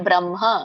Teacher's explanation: ಬ್ರಹ್ಮ ಇಲ್ಲಿ ಬ್ರಹ್ಮ ಇದೆ ಹಾಗಾಗಿ ಮೊದಲು ಎದೆಯಿಂದ ಉಚ್ಚಾರಣೆ ಬರಬೇಕು ಹ ಬ್ರಹ್ಮ ಮ ಹೇಳಿ ಆಮೇಲೆ ಹ ಹೇಳಬೇಕು ಹ ಹೇಳಿ ಮ ಹೇಳಂಗಿಲ್ಲ ಬ್ರಹ್ಮ ನೆನಪಿ ಓದು ನಿಮಗೆ ಸಂಯುತ ಅಸಂಯುತದ್ದು ಒಂದು ವ್ಯತ್ಯಾಸ ಕೊಟ್ಟಿದ್ದೆ ಬ್ರಹ್ಮ ಹೇಳುವಾಗ